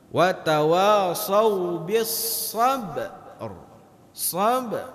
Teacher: Wa tawassaw bis sabr. Jadi huruf sebelum huruf ra itu tertahan dulu. Tertahan. Kenapa? Karena di situ ada huruf qalqalah.